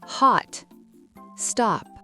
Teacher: En américain, on ouvre la bouche beaucoup plus grand. Le mot hot ne se prononce pas avec un son arrondi comme en britannique mais avec le son A. C'est le même son que quand vous dites A chez le dentiste. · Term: A profond